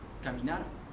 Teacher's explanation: predomina lo que es la letra r y está este pronunciada con más fuerza y se alarga un poco